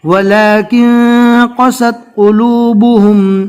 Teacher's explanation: نون ساکن کے بعد اکفا کے 15 حروف میں سے قوف آ گیا، لہٰذا یہاں پر نون ساکن کو ناک میں چھپا کر پڑھیں گے